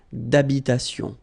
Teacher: Remember, H doesn't exist in French, well, in most of the cases. So it does mean that you don't pronounce it.